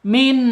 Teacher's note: Nunnya tidak boleh mantul ya, karena ini bukan qalqalah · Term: idhar halqi